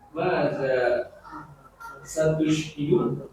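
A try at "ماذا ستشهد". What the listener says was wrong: La. Syanya fathah itu. Satu syahidu.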